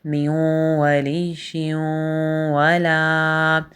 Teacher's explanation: لام کے ساتھ الف مدہ ہے، اسے ایک الف کے برابر کھینچ کے لمبا کریں گے۔